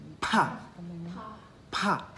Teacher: When you say pa with the H sound, it's kind of explosive.